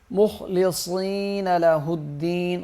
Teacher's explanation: خا اور صاد موٹے پڑھے جائیں گے